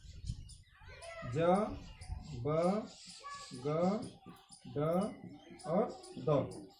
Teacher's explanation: ड का उच्चारण स्थान हो गया मूर्धा और द का उच्चारण स्थान हो गया दंत